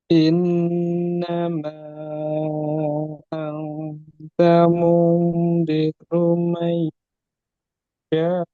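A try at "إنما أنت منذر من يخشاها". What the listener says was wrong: Tipiskan ikhfa coba. Langsung gigit lidahnya. Tebalkan ro domah.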